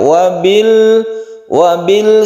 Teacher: izhar qamariyah membacanya itu jelas lamnya harus terbaca